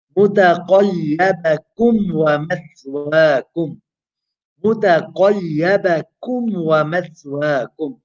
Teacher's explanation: Again, you have a Meem, Sakinah followed by a Waw, Izhar Yata. Make sure you don't merge the two because Meem and Waw are very close in makhraj.